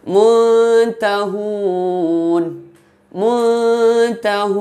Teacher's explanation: Jadi makharijul huruf ta dan nun itu berdekatan. Jadi dinamakan ikhfa aqrab. Contohnya muntahun, muntahun, itu yang nun mati berjumpa dengan ta.